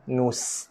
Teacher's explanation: Jaga sofir, desiran pada sin.